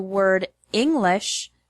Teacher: the word English has the stress on the first syllable, ing